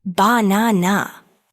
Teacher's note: in the word banana, the stress is on the second syllable